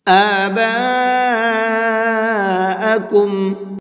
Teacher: آباءکم، یہاں پر یہ بڑا مد بنا ہوا ہے، اس بڑے مد کو 4 سے 5 الف کی برابر کھینچ کر کے پڑھیں گے